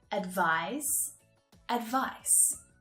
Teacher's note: It's that final consonant sound, the S unvoiced sound and the Z voiced sound